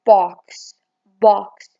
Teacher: The back of the tongue is just below the half open position, no contact being made between the tongue and the upper molars. The jaws are wide open and there is slight open lip rounding and the tongue tip is behind the lower teeth.